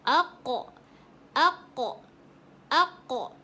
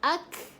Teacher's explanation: Kalau huruf kaf, dia biasa-biasa je. Ada keluar angin sedikit.